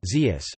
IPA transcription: zius